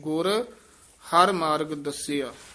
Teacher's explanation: ਇਹ ਗੁਰ ਹਰਿ ਨਹੀ ਕਹਿਣਾ ਗੁਰ ਪਦ ਤੇ ਯਮਕ ਲਾ ਦੇਣੀ